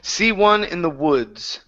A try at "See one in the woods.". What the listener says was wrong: Open up your mouth just a little bit more. Woods. See one in the woods.